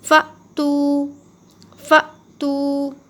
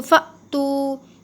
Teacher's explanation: حمزہ ساکنہ کے پڑھنے میں جھٹکا ہوتا ہے تو تھوڑا سا جھٹکے کے ساتھ پڑھیں گے